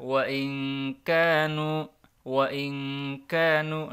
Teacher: Ikhfa artinya disamarkan. Maka nunnya tidak dibaca jelas tapi disamarkan, didengungkan selama 2 harokat.